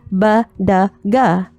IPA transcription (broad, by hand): b d ɡ